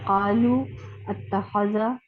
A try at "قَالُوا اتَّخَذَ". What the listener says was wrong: اچھا, اتخذا نہیں پڑھیں گے اس کو, آپ پڑھیں گی اتخذا, زیر لگائیں گے الف کے نیچے. یہ بھی ہم پڑھیں گے انشاءاللہ کہ یہ جو حمزۃ الوصل ہوتا ہے اس پہ کون سی علامت آتی ہے.